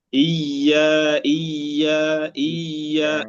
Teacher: لكن الخطأ الثاني وهذا ما يقع فيه أكثر طلاب العلم، إلا هو أن يشدد الياء مع سكونها. لا، نحن نشدد الياء مع فتحها وليس بالسكون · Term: تشديد الياء مع فتحها